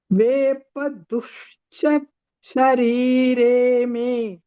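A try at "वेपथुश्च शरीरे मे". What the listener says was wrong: Tushcha. Not du. Tu.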